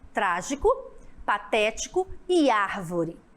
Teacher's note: as proparoxítonas, sílaba tônica, né, na antepenúltima.